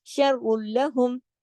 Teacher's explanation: را کو موٹا پڑھیں گے، لام کو نہیں، ٹھیک ہے